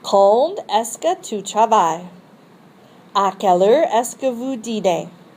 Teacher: In information questions, your voice rises on the interrogative expression and then falls until the last syllable.